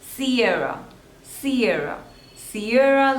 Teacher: two syllables and the stress is on the second one